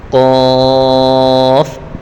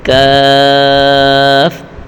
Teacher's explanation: اب دیکھیں قاف اور کاف دونوں کو کھینچ کر پڑھا جاتا ہے، اور قاف پر حروف ہے، کاف باریک حروف ہے، دونوں ہم آواز حروف ہیں، دونوں میں فرق ہونا چاہیے۔ قاف کو پر پڑھیں گے اور کاف کو باریک پڑھیں گے